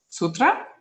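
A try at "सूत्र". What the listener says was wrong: Make it a long U.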